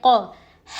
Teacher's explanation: قوف زبان کی جڑ کو چھوٹی زبان کے پیچھے کے حصے سے لگانے پر ادا ہوتا ہے